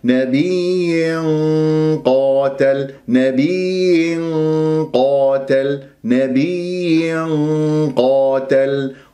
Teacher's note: وكأي نبي تنوين كسر جاء بعدها قاف، قاتل راح تكون مفخمة مرتبة أولى لأنها مفتوحة بعدها ألف، فراح يكون عندي غنة الإخفاء مفخمة مرتبة أولى. نبي كسرة ثم بعد ذلك الغنة، نبي قاتل، نبي قاتل، نبي قاتل، قاتل وليس قاتل، والألف تفخم تبعا للقاف، والألف ساكنة قبلها قاف مفتوح، راح يكون عندي مطبية حركتين.